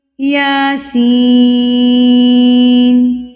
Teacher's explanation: اب یہاں پر عموماً مسٹیک کیا کرتے ہیں اسٹوڈنٹس، یہاں پر کیا کرتے ہیں کہ یا کو بھی اتنا ہی کھینچ رہے ہوتے ہیں، سین کو بھی اتنا کھینچ رہے ہوتے ہیں، جو کہ غلط طریقہ کار ہے۔ یا ایک حرکت کے برابر، یعنی کہ ایک الف کے برابر، ایک حرف کے برابر، اور سین جو ہے وہ 4 حرکات کے برابر، اتنا فرق ہے دونوں میں۔